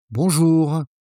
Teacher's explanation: The first sound bon is nasal in French. The closest you'll find is the vowel in the word long.